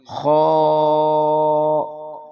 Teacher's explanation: خا یہ حلق سے ادا ہوگا اور اس کی آواز موٹی ہے